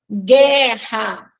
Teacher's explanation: Vejam que nós não escutamos o som do U, né? Então, aí a gente tem GU, que é um dígrafo.